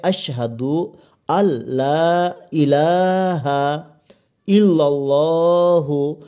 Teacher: এখানে লামের ওপর খাড়া যাবার রয়েছে, সেই জন্য এখানে এক আলিফ টান হবে